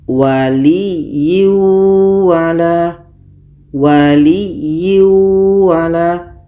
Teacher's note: tanwin kita masukkan kepada bunyi Wow itu yang Idgham